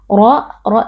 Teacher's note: dua harakat suir suyi ya tasdid kita beri penekanan sedikit ro ro tafkhim atau ro tebal karena huruf RO di sini berharakat fathah